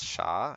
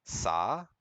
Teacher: Wuhan dialect it lacks retroflex initials